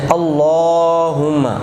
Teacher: تھوڑا موٹا بھی کرنا ہے لفظ اللہ کو اور لمبا بھی کرنا ہے